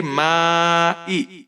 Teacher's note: مد متصل ہے، اس کو آپ 5 حرکات کے برابر کھینچ کر پڑھیں گے